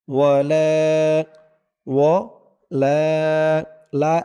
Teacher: এক আলিফ টান জবরের পরে খালি আলিফ